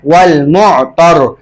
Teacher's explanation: र को मोटा पढ़ेंगे क्योंकि र साकिन हो जाएगा वक़फ़ में, उससे पहले ता पर ज़बर है